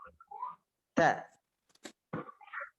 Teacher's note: huruf ta ketika diucapkan terdengar ada nafas yang mengalir. Atau dalam ilmu tajwid disebut sifat al-hams.